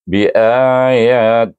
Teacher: Lahi pertama kita idgham ganti kepada lam jalalah dengan bacaan nipis 2 harakat